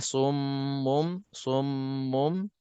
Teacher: kita ada mim musyaddadah wajibul ghunnah jadi dengung dua harakat